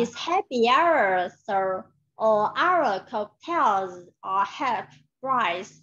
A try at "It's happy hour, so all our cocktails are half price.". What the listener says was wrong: No, từ cocktails and half price em làm chưa được. Cái tông âm nó không rõ ràng.